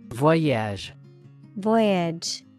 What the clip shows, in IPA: ˈvɔɪɪdʒ